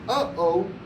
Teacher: you're literally closing your throat you're stopping all sound and air coming out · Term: glal stop